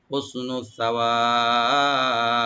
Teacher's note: তো হুসনু সাওয়াব, সাটাকে অবশ্যই রাইট দিবেন আর টানবেন না, ওয়া একালে টানবেন। আর বা এখানে সাকিন হয়ে যাওয়ার কারণে এখানে কলকলা হবে